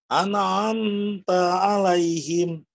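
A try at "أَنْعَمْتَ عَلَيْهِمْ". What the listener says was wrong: Masih direm, Pak ya. An'amta. N-nya tekan, Pak. Tekan.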